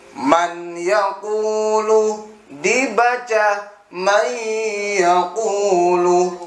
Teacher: Nah, kali ini kita belajar tentang idgham bi ghunna. Idgham artinya memasukkan, bi ghunna dengan mendengung